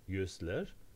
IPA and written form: ɟꟹzler (yüzler)